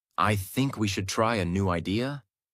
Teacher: your voice goes up at the end of the sentence as if you're asking a question even when you're not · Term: rising intonation